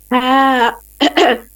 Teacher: Ha is read from the middle throat. It should be read with force. It should be as sharp as a sword.